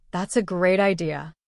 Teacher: If I say it with energy and a high falling tone, it means I truly think your idea is wonderful. But if I say it slowly, stretching the words with a low rising tone, that's a great idea, it can mean the opposite.